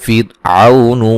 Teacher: را کو باریک پڑھا جائے گا، را ساکن سے پہلے زیر ہے